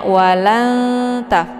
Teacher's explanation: Jadi sambil ditahan bunyi n-nya yang disamarkan ini langsung posisi lidahnya itu udah menuju ke huruf ta. · Jadi bunyi n-nya itu agak samar-samar antara n atau bukan gitu ya. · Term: ikhfa aqrab